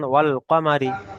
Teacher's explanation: পরটা টান দেওয়া নিষেধ কিংবা র এর নিচে জের এসছে যেটি র এর নিচে জের এসছে র কে বারিক করে পড়তে হবে